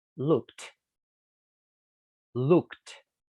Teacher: Por ejemplo, look. El último sonido del look es k. Por lo tanto, la ed suena t. Y el pasado del look es looked.